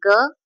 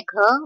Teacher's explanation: सघोष में अल्प प्राण है ग, महाप्राण है घ